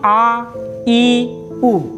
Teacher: ह्रस्व स्वर से 2 गुना समय लगता है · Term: दीर्घ स्वर वर्ण